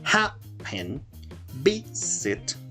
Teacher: el acento va en la primera sílaba y no en la segunda